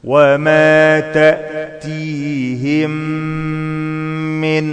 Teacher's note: ميم ساكنة بعدها ميم متحركة بدخلهم في بعض اسمه إدغام مثلين صغير مع الغنة حركتين